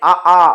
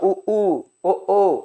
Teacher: வாயை திறந்தா அ ஆ உதட்ட குவிச்சா உ ஓ